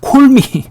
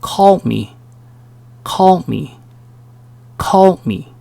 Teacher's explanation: 콜미 이렇게 하지 않고요. O와 A의 중간 발음.